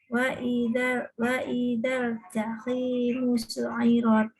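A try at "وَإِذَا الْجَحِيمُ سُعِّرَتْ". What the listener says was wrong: Ditahan di ainnya ada tasydid. Wa idal jahimu su'irat.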